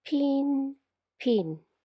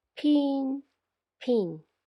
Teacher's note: the [p] in “jyutping”, it is an unvoiced aspirated consonant. It sounds like the “p” in “pin”...